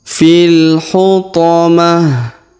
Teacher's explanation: Tak marbutoh di ujung kita rubah menjadi ha sukun ya.